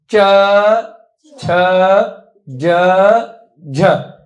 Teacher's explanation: जीव ऊपर वाले हिस्से में तालू में लग रही है जाकर के आगे की तरफ